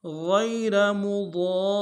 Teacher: غین کو گہرے سے ادا کریں گے اور را کو موٹا ادا کریں گے